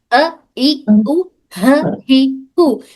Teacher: बिल्कुल हलक के निचले हिस्से से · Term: हमजा और ह